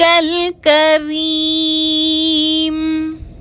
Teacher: یا ساکن سے پہلے را کے نیچے زیر ہے، یا مدہ ہے، 2 حرکت کے برابر کھینچ کر پڑھیں گے اور را کے نیچے زیر ہے تو را کو باریک پڑھیں گے، میم کو ساکن کر کے وقف کریں گے۔